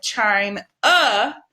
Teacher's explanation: if the letter is at the end of a word like China ah you also make the schwa ah sound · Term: schwa sound